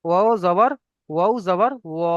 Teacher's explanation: ওখানে যেরকম পড়ে এসেছি এখানেও সেরকম পড়তে হবে। আলিফ মাদ্দার কারণে এক আলিফ পরিমাণ টান দিয়ে পড়বো।